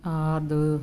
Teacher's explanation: ਆਦ ਇਹਨੂੰ ਥੋੜਾ ਜਿਹਾ ਲੰਬਾ ਲੈ ਕੇ ਜਾਣਾ ਹੈ ਦਦੇ ਨੂੰ ਸਿਹਾਰੀ ਦੀ ਆਵਾਜ਼ ਕੱਢਣੀ ਹੈ